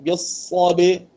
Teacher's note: ba dibaca nipis sebab dia ada sifat istifal dan infitah, dia tak ada sifat isti'la